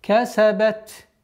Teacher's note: Договариваем, выделяем фрикативность звука та при остановке.